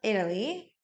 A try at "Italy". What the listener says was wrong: didn't pronounce the T. I didn't hear the T. Italy.